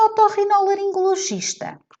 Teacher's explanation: a sílaba tónica vai recair na penúltima sílaba, tornando-a uma sílaba grave. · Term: palavra grave